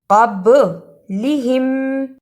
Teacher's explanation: قاف کو موٹا پڑھنا، با پر جزم کی صورت میں قلقلہ ہے